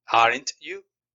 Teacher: empiezo con un volumen alto y termino en la segunda palabra con un volumen bajo. A esto se le conoce en inglés como falling intonation.